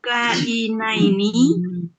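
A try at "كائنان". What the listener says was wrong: Bukan ini Bu. Kainani. Nanya panjang Bu. Tambahin alif belakang. Jadi kainani. Jadi gini Bu, kalau KBPA subjek itu yang pertama ini kainun, yang kedua tambahin alif nun, ani, tambahin ani. Jadi kainani gitu.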